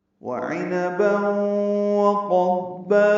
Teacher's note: واو ہونٹوں کی نا تمام گلائی سے ادا کریں گے، جلدی پڑھیں گے، عین وسط حلق سے ادا کریں گے جلدی، اور معروف پڑھیں گے، نون کو جلدی پڑھنا ہے۔